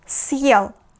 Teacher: if we put the hard sign after letter S, we need to make a pause after S, so it will be съел.